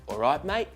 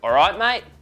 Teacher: But there is a difference here, and if you've got a Cockney accent and you want to turn it into an Australian one, your best bet is to change your voice from a dry sound to a twangy sound. So we go from alright mate to alright mate, real twang.